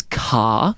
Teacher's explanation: in Australian phonology, right, we are a non-rhotic English dialect